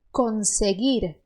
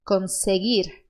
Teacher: a sua língua ela vai subir subir bater no céu da boca e voltar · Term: R muito parecido do Sul